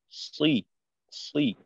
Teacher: সদের সময় দাঁতের থেকে দাঁত আলাদা রেখে আওয়াজটাকে একটু মোটা করে জিহ্বার গোড়া উপরের দিকে উঠানোর মাধ্যমে আওয়াজটাকে একটু মোটা করা